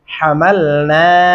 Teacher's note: یہاں پہ بہت سارے لوگ حملنا موٹا ہا پڑھتے ہیں, نہیں باریک پڑھیں گے.